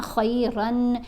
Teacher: نون کی آواز کو ہم نے ناک میں چھپا کر پڑھنا ہے. جب رن پڑھتے ہیں نا، خیرن، نون کی آواز ہے نا، اس نون کی آواز کو آپ نے واضح کر کے نہیں پڑھنا ہوتا جب آپ اخفا کر رہے ہوتے ہیں.